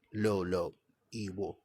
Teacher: you can actually pronounce Igbo with the low low tone that it has